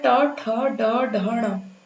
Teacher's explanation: तो इसका उच्चारण स्थान होता है मूर्धा।